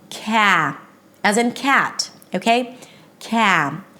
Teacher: in American English, the beginning syllable is the a as in cat, so you want to take the time and drop your jaw a lot when you're making it.